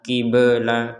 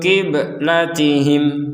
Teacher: Di sini ada ba sukun, maka kita harus memantulkannya. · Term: pantulan